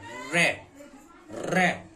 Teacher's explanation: जिन व्यंजन वर्णों के उच्चारण करते समय जिह्वा के मुख्य मध्य तेजी से लड़खड़ाए या प्रकंपित हो उसे लुंठित कहते हैं। लुंठित व्यंजन प्राय प्रकंपित व्यंजन है, यानी कंपित होता है, जीभ रगड़ती है